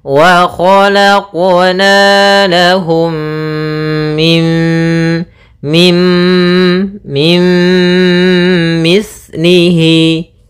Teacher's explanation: memasukkan nunnya kepada mim Tapi tidak secara sempurna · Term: Idgham bhunah